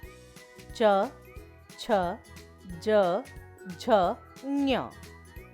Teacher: च वर्ग के व्यंजन तालव्य कहलाते हैं, क्योंकि इनको बोलते समय जीभ का पिछला भाग तालू से लगता है